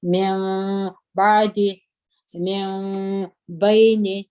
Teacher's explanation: نون ساکن دی وروسته با راغلی ده، د نون اواز په میم اړو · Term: اقلاب